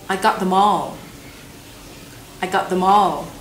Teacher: hóa ra là them nối với all, chứ không phải là the với more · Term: nối âm